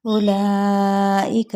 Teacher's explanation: حمزہ کی پیش کو لمبا نہیں کریں گے، لا کو 4 حرکت کھینچیں گے اور اس حمزہ کی زیر کو نہیں کھینچیں گے۔